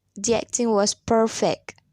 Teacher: you often don't hear k or g clearly in the middle or at the at the end of a word listen one